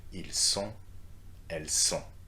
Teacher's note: we are not pronouncing the T here